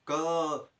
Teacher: जो भी क वर्ग वाले व्यंजन होते हैं उनका उच्चारण स्थान होता है कंठ